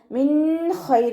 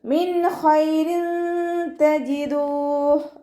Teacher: ലയിപ്പിച്ച് ഉന്നയോടുകൂടി ഓതികൊടുക്കുക ശ്രദ്ധിക്കുട്ടോ നൂൻ സാക്കിനക്ക് ശേഷം ഇഹാ ലെറ്റർ ആയിട്ടുള്ള വന്നിട്ടുണ്ട് നൂൻ സാക്കിനയെ വ്യക്തമാക്കി മണിക്കാതെ ഉച്ചരിക്കുക